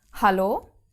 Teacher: The German H is aspirated at the beginning of a word, like in hallo.